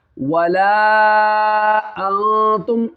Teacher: तुम नहीं पढ़ना, मीम में गुन्ना नहीं करना है। बाज़ लोग यहाँ पे गुन्ना कर देते हैं। यहाँ पे इज़हार शफवी का कायदा है।